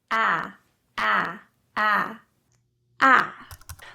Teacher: For the ah sound, the jaw is dropped open. The back and the middle of the tongue are down, feeling the back of your oral cavity widening as you spread your lips into a smile.